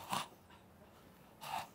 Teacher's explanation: This is voiceless, pharyngeal, fricative.